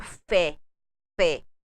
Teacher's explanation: quando você tem um acento agudo fé fé é mais aberto